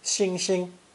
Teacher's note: in beijing dialect the second syllable is unstressed